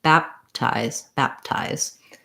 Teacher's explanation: So I don't say baptize with a break and a released P. I just close my lips for the P, bap, then I put my tongue ready for the T and release it all into the T. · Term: unreleased stop